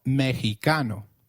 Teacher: it is pronounced as a throaty H in the words Mexico, Mexicano, and Oaxaca, which is a state in Mexico.